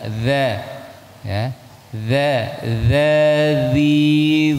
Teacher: Zal keluar dari ujung lidah menyentuh ujung seri atas